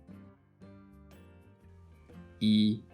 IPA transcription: i